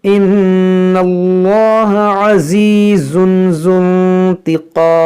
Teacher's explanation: یہاں پہ جو واو ہے اور یہ جو الف ہے ان دونوں کو نہیں پڑھیں گے، اس ذال کو اس نون ساکن سے ملائیں گے، ذو انتقام پڑھیں گے، اس کو پڑھیں گے ان اللہ عزیز ذو انتقام۔